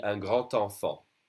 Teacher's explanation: the D would be pronounced like a T when you do a liaison. So it would be un grand enfant, a big child.